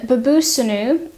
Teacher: noun would have been uh babutum and what's happened is that the t of the stem of the noun has contracted with the sheen of the third masculine plural suffix to form an s